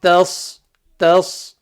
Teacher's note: You don't want to change the ta into a full mouth letter because it's not.